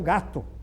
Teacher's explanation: Não, vai dizer um gato. É O, é fechado.